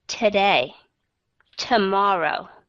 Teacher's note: Nhưng mà khi mà các bạn cho đi vào chung một chữ đó, các bạn sẽ đọc âm thứ nhất nó là schwa sound. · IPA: ə